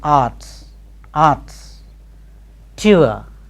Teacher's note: final R and the medial R between a vowel and a consonant are silent. Final R and the medial R are silent.